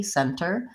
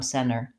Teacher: So that time I just said it with a very clear T, center. But often when there's an NT in the middle, we don't really hear that T sound